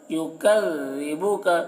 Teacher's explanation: ذال کو باریکی کے ساتھ